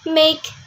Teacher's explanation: the vowel sound of make is actually a double vowel or diphthong.